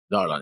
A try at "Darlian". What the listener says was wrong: Well, it's Darlian, so the I is in there. It's not a silent I.